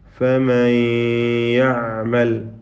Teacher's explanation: നൂനിനെ യായിലേക്ക് ലയിപ്പിക്കുന്നു. പൂർണ്ണമായ ലയനമല്ല, മറിച്ച് ഭാഗികമായ ലയനമാണ്. ഇദ്ഗാം നാഖിസാണിത്. · നൂനിൻ്റെ ഉച്ചാരണം അല്ലെങ്കിൽ നൂനിൻ്റെ ശബ്ദം ഭാഗികമായി കേൾപ്പിച്ചുകൊണ്ട് തന്നെയാണ് പാരായണം ചെയ്യപ്പെടുന്നത്